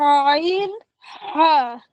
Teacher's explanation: এই গলার মাঝখান থেকে উচ্চারণ করো আইন হা।